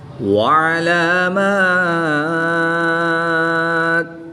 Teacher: دو زیر کی تنوین کو وقف کی حالت میں ساکن کر کے پڑھیں گے